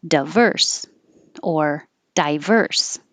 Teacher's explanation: the di is not stressed so it can change to da or d but some people keep it die